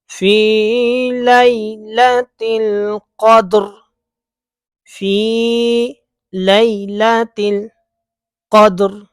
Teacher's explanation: یا ساکن سے پہلے زبر تو یا لین، اور حرف لین کو لمبا نہیں کرتے